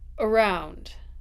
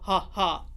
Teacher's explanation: my beginning of the word is a schwa because it is unstressed